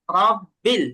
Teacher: রকে কখনো রা পড়া যাবে না, র পড়তে হবে, রা না। র, র, মুখটা সামান্য গোল হবে, রা না, রাব্বিল না, রব্বিল।